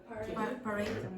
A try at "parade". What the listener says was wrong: Parade. So the first syllable is not strong, so you say p. You don't say pa. Parade.